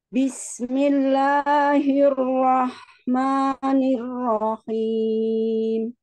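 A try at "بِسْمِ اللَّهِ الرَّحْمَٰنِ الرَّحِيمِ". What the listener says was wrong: Rohim, huruf H-nya tipiskan Umi. Rohim.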